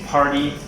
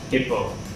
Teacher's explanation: you should be able to feel the difference between if you say party, you should feel the strong blast of air in your hand, versus hippo.